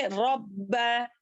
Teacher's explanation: रब्बा में शिद्दत के साथ पढ़ें क्योंकि बा जो है दो बन गया है मुशद्दा लग जाने की वजह से। यहाँ पर क्या करेंगे, दो करेंगे, रब्बा हाज़ल बैत।